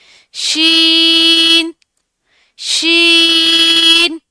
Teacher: जुबान का दरमियानी हिस्सा ऊपर के तालू को लगे तो शन अदा होगा। इसकी अदायगी करते वक्त इसमें फैलाव पाया जाता है शन की अदायगी करते वक्त। · زبان کا درمیانی حصہ اوپر کے تالو کو لگے تو شین ادا ہوگا. اس کی ادائیگی کرتے وقت اس میں پھیلاؤ پایا جاتا ہے، شین کی ادائیگی کرتے وقت، ٹھیک ہے؟